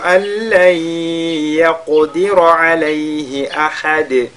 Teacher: nous sakin est suivi de la lettre lam. On fusionne donc ce nun dans la lettre lam. On fait idgham bila ghunna.